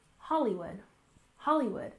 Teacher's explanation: First, we have Hollywood. We stress the first syllable, Hollywood, Hollywood.